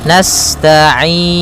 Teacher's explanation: sifat sinnya sempurnakan dengan mengalirkan nafasnya